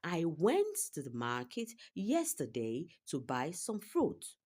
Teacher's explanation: Went is stressed. Ma is stressed in market. And yesterday is also stressed. Buy is stressed. Fruit is also stressed. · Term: irregular rhythm